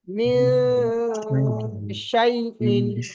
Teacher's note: ইকফার 15টি অক্ষরের মধ্যে শিন এসছে নুন সাইনের পরে, যেহেতু সেই জন্য গুণনা হবে।